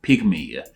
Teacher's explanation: Here we see a single word which makes those two previously mentioned Y sounds. The first Y makes the short I sound while the second one makes that long E sound.